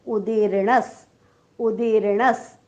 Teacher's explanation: णच्या पुढे विसर्ग आहे, विसर्गाच्या पुढे स आलेला आहे म्हणून विसर्गाचा उच्चार आपण हलंत स करणार आहोत. उच्चार होईल उदीर्णस.